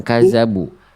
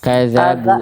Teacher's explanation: Kadzabu dalalnya ujung lidahnya dijelaskan